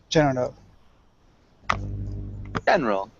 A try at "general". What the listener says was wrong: General. So we don't really pronounce the second E. So it sounds general.